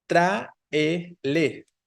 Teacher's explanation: Es entonces esdrújula porque la tónica es la, hay un hiato exacto entre la A y la E, ¿no? La tónica es la antepenúltima, entonces tráele debe llevar tilde.